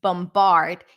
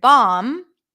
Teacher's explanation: bombard here we do hear the B but the word bomb we don't hear the B